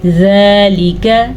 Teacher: کاف کو لمبا نہیں کرنا کیونکہ کاف کے اوپر زبر ہے اور زال کے اوپر کھڑی زبر ہے.